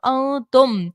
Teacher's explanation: پھر اس کے بعد دیکھیں تو انتم، نون ساکن کے بعد تا ہے حرف اخفا کا، تو یہاں پر ہم نے اخفا کا قاعدہ لگانا ہے اور غنہ یہاں کریں گے، اور غنے کی مقدار ہم پڑھ چکے ہیں، ایک الف کی مقدار غنے کی مقدار ہے